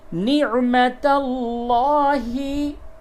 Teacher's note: لفظ اللہ کے لام سے قبل زبر ہے، اس کو پر کر کے پڑھیں گے، یعنی منہ بھر کے آواز نکلے گی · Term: لام کو پر